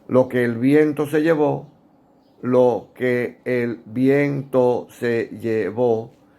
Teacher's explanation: y eso obliga a que se pierda una sílaba por sonido por fonética eso se llama sinalefa